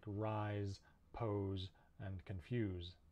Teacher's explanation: there's also some words that end s e where it's actually a z sound like rise pose and confuse